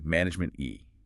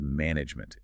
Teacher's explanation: That final e, and frankly the e in the middle are virtually silent.